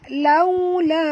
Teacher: waw di sini sifatnya lin lembut. Moncongkan mulut tuan-puan. Laula. La di sini panjang 4 hingga 5 harakat.